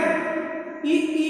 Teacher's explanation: ई का उच्चारण स्थान तालु है